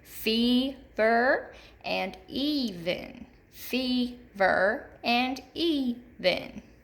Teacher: You can hear that long E in the first syllable in both of these words.